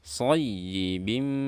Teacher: Berikutnya ada kaf fathah dan shad. Nah, di sini ada ya bertasydid. Ini kita harus naikkan suaranya dan tambah tekanannya karena ini disebut dengan nabr.